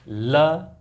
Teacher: ल अगर आप बोल के देखोगे तो उसमें जीभ है वो अपने तालब के पास, दंत और तालब के पास में यहाँ पे टच होकर के और दोनों साइड से हवा को बाहर निकालती है, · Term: पार्श्विक व्यंजन